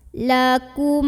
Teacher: mim sukun bertemu Hamzah namanya izhar syafawi maka mim sukun nya dibunyikan dengan jelas